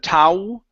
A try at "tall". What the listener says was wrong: remember the L is not an oo sound, but an oo. Use your tongue.